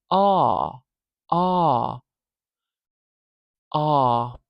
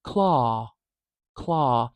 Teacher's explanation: this low back vowel means we open our mouth really wide our jaw is low our tongue is low it's a low back vowel and by back I mean we've